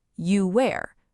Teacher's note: Your throat never stops vibrating. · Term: invisible W